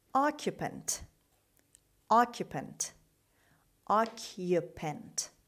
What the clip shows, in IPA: ˈɑːkjəpənt